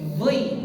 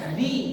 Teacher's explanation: Apa yang membedakan adalah pangkal lidah yang di dalam. Pangkal lidah itu dinaikkan. Kalau di tipis, dal itu turun pangkal lidahnya.